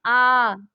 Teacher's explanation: तो पश्च स्वर जो है वो कौन सा है, पश्च स्वर जो है बड़ा आ है। आ, क्योंकि अगर हम इसे तेज से बोलते हैं आ तो पीछे से ऐसा लगता है गले के पीछे से बिल्कुल आवाज आ रही हो